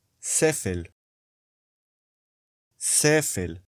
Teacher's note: The first syllable is stressed.